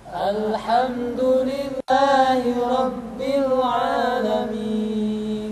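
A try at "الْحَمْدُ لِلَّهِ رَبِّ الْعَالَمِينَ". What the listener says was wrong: Jadi kita tidak boleh membaca Alhamdulillahi rabbil alamin. Ya, jadi ketika mengucapkan a di sana kepanjangan.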